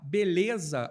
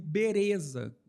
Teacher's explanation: não havia o fonema L na maioria das línguas africanas. E, portanto, ele era substituído pelo R. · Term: rotacismo